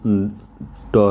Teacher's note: तो ट अक्षर जो है उच्चारण की दृष्टि से दंत नहीं है, मूर्धन्य आता है ये